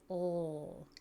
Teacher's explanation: Our tongue is back up behind our teeth. We turn our voice on. L, kind of pull our lips back a little bit.